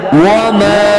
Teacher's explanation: وما، واو زبر وا، میم زبر ما، الف مدہ، وما، تین الف کے برابر چھوٹی مدہ ہے، لمبا کر کے آگے بڑھیں گے